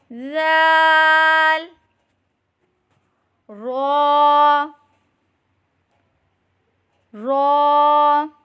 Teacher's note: जुबान की नोक और मुकाबिल के तालू से अदा करें